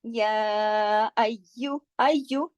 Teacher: یا پہ تشدید ہے، 2 یا ہیں، دونوں کو جوڑ کے پڑھا جائے گا لیکن سختی سے نہیں، یا نرم لیٹر ہے.